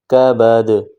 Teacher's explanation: دال دو زیر دن، تنوین ہے اخفا کریں گے، دال دو زیر دن، کعبہ دن وقفاً، جب سٹاپ کریں گے کعبد. دال آخر میں آ رہا ہے، جب اس پر وقف کریں گے تو یہاں پر قلقلہ کریں گے